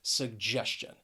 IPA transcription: səgˈdʒɛs tʃən